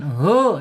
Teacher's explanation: Ha ada makhrajnya di bawah tenggorokan. Kemudian secara sifatnya ada di alhams ya. Mengalirnya napas atau udara ya.